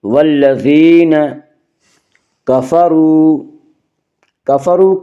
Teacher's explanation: را کے اوپر پیش ہے اس لیے را کو پر پڑھیں گے۔